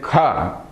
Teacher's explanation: I should also aspirate it that is I have to let out some air also if I simply say I not leaving out much air if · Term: aspiration